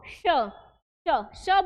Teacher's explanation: हमारा जो तालू है वो यूज हो रहा है यानी हवा जो है वह कहां से निकल रही है तालव्य से बाहर निकल रही है